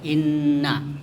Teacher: Kemudian innaka, ya, itu ada nun bertasdid, itu disebut gunnah. Gunnah itu artinya mendengung, ya, jadi harus didengung dengan panjang